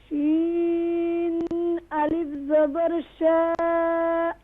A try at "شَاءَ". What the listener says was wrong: شین pronounce properly.